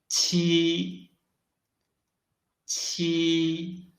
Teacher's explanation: we read t its pronunciation is the same as g but it blocks the air flow in the mouth first and then releases the block